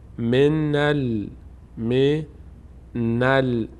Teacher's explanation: الف خوانده نمیشه نون می‌چسبه بلام